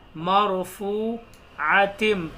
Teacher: تا کو یہاں میم میں ملائیں گے. عاتم مطہرہ, غنہ کریں گے, میم پر تشدید آ رہی ہے.